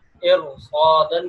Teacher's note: ارصادن کی را کو بھی ہم پر کر کے موٹا کر کے پڑھتے ہیں